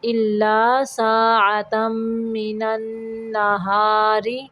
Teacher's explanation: را کے نیچے زیر را کو باریک پڑھیں گے